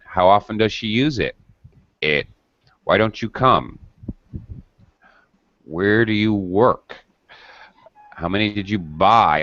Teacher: When we use interrogatives, we're going to be asking information questions, and thus we're going to have final falling intonation in the question. · All right, I go down at the end of the question.